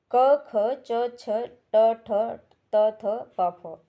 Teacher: प्रत्येक वर्ग की प्रथम 2 ध्वनियां जो है अघोष कहलाती हैं।